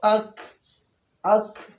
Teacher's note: اس کا مطلب یہ ہے کہ اس کی ادائیگی میں آواز مخرج میں ایک قوت کے ساتھ ٹھہرے کہ آواز بند ہو جائے. اس جہر میں تو سانس بند ہو جاتا تھا، اب یہاں پہ آواز بند ہو جاتا ہے.